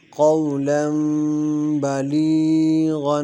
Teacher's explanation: بلی کی یا مدہ ہے، اس کو ایک الف کے برابر کھینچ کر پڑھیں گے